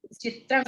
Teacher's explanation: चित्रम, त्रा के ऊपर जो अनुस्वार है ये क वर्ग के अंतिम, क वर्ग के अंतिम वर्ण वाला हो जाता है। क ख ग घ इंगा, चित्रंग बोलते हैं हम, चित्रंग ऐसा कर देते हैं, इंगा चित्रंग, इसका ऐसा हो जाता है।